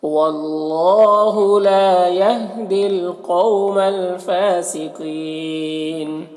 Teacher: فا میں کھڑا زبر سے ایک الف برابر کھینچیں گے، قاف حروف مستعلیہ میں سے پر پڑھیں گے، یہاں پر یا مدہ ہے، اور اگر یہاں پر وقف کریں گے تو نون کا زبر سکون سے بدل جائے گا، تو پھر یہاں پر مد عارض وقفی ہوگا۔ اس میں طول توسط قصر تینوں جائز ہوتا ہے، طول اولا ہوتا ہے، پھر توسط، پھر قصر کا مرتبہ ہوتا ہے۔